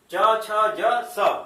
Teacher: जहां से च छ ज निकल रहा है वहीं से स भी निकलेगा, च छ ज स। और धीरे धीरे अभ्यास करेंगे तो फिर अभ्यास में आ जाएगा। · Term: तालव्य श